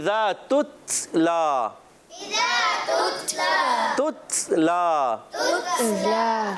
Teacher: ता और काफ ये शिद्दत के साथ सख्ती के साथ आवाज बंद होती है और पस्ती नरमी के साथ आवाज सांस जारी रहता है तब